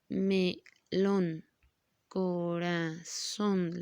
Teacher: la sílaba tónica está en último lugar